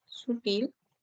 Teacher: su sílaba tónica es la última